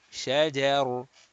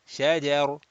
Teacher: If we are continuing, kasratain will make this ra muraqqaq, flat. If we are stopping, ra becomes sakin, preceded by a fatha, and ra will be read mufakham, rounded.